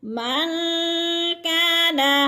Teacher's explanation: من پہ نون ساکن کے بعد کاف حروف اخفا میں سے ہے تو غنہ کریں گے، یعنی ناک میں آواز لے جائیں گے